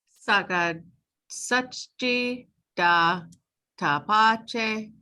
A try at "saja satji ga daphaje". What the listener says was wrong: So saja. Remember, this is ja. Saja. Dap. separate. This is the hard part because this H it's the glottal H, so it's not just ha, it's Dap ha j.